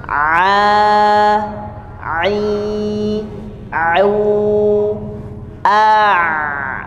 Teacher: ketika disukunkan ain itu tidak cepat-cepat berhenti bunyinya, jadi mengalir bunyinya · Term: huruf ain